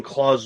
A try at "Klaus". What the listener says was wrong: No, it's Claus with a K. Klause. Or Klaus. Klaus.